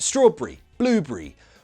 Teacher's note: We make that ery sound into just a re.